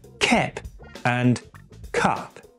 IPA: kɛp and kap